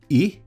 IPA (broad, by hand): ɪ